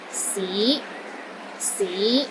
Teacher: The fifth tone is another rising tone. It starts low, then rises to the middle of your range.